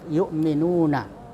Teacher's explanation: Kalau ada huruf dhamma ketemu waw sukun, itu mad tabi'i. Ya, panjangnya 2 harakat atau 1 alif